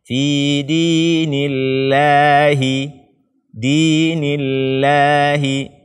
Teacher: Akan tetapi ketika sebelumnya kasrah maka dia dibaca seperti lam biasa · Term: lafaz jalalah